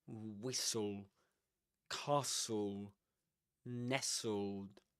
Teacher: you don't pronounce the t in whistle